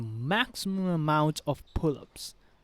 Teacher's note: the word after the max will be unstressed